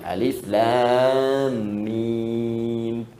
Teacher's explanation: Alif harful hawa, lam ke lisan, mim di bibir.